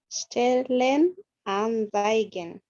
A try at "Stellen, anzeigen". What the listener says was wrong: The only correction, and I hear it in not only in your pronunciation, it's a common mistake. This letter is pronounced as th, not z, but th, zai, zai.